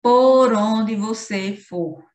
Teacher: a assonância acontece graças à repetição da vogal tônica O, que ocorre em todas as palavras.